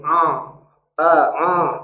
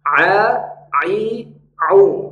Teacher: huruf Ain keluarnya dari tengah tenggorokan bukan dengan cara memasukkan ke hidung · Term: bunyi Ain